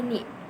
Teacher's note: terbuka dan lidahnya itu mendekati ke langit-langit yang depan